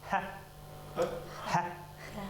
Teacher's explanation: Это просто выдох. Здесь хрипеть не надо, здесь надо просто выдохнуть.